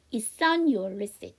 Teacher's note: 자, 그 다음에 제가 아까도 한번 말씀을 드렸는데 T 사운드 뒤에 S 사운드 나온다고 해서 이거를 치 발음하시지 않는다는 이유, T 사운드 받침 넣으시고 S 사운드 단독으로 빼는 이유 중에 하나가요. 여기 보면 이렇게 on이라는 모음으로 시작하는 단어가 나오면 S를 넘겨주시면 되죠